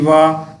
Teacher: वा का जो उच्चारण स्थान है वो दंत और ओष्ठ है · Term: दंतोष्ठ